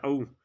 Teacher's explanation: दीर्घ है अनुनासिक है। पश्च वृत्ताकार है। अर्ध विवृत है।